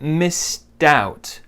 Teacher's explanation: The D joins the O. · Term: linking